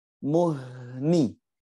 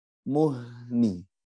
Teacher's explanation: Jadi sampai bunyi ni itu suara udaranya masih nyambung.